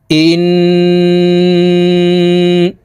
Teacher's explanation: হামজা তাশদি নুনের সাথে নাকের বাঁশি থেকে গুন্নাহ করে পড়তে হবে ইন তিন সেকেন্ড পরিমাণ গুন্না করে ধরে রাখবো